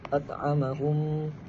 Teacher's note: Yakni mim mati bertemu dengan huruf mim. Bacaan dia dengung dengan kadar dua harakat.